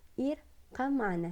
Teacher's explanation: Seolah-olah tuh ba-nya itu, ba matinya itu hampir ngelebur kan, ngelebur ke ma-nya gitu ya. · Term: idgham mutaqaribain